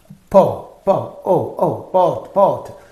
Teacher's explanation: o is that rounded po po o o po po so in the production of this oval the lips are rounded therefore this is called open back rounded oval · the tongue goes down in the mouth okay the tongue goes back in the mouth and it is rounded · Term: open back rounded vowel